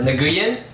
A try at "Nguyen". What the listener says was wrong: Nguyen. I hate that. Okay, the N is silent, okay? You cannot do it to say W-I-N, Win, or W-H-E-N, Win.